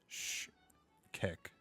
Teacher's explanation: the X is pronounced as a sh sound, and the K is a strong K as in cat